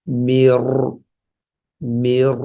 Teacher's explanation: 2 number হচ্ছে এ রর মধ্যে একটা সিফাত আছে, এটাকে বলে তাকরর, মানে কাঁপবে, ভাইব্রেশন হবে একটু